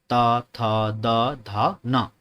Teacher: जब आप इनका उच्चारण करेंगे ना, देखो दांत पे आपकी जीभ टच हो रही होगी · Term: दंत वर्ण